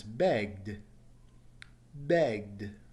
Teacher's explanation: Notice it's a D sound at the end and no extra syllable.